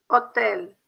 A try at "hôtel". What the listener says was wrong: O, fechado. Hotel. Hotel.